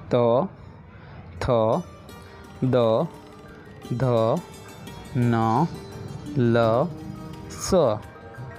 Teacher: you can not read this consonants without touching your tongue to your teeth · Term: दंतव्य